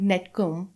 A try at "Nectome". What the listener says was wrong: Nectome. It's not net. It's nect. Just like you would pronounce nectar. C comes before the T.